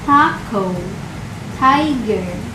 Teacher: the first syllable thai has longer sound than the second syllable ger since it ends with a vowel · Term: long sound